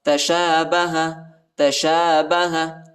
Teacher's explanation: شین کے اوپر کڑا زبر آیا ہے، اس کو تقریباً 1 الف کی مقدار تک کھینچیں گے۔